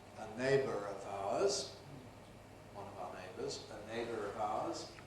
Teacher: Neighbour, a neighbour. When it's followed by a vowel, of course it's subject to linking R.